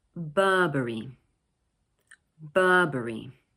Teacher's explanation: This word is made up of 3 syllables, Burberry, with the stress placed on the first one, Burberry. Notice that in British English, the middle R sound is not usually pronounced. So instead, we lengthen the vowel sound.